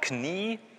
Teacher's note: Wenn Sie jetzt das zusammen sozusagen reinpacken in ein Wort, Knie, dann geht es auch schön, die Sonorität, also der Öffnungsgrad geht schön nach oben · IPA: k n iː